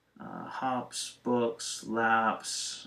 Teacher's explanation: You follow an unvoiced sound, you'll have an S sound.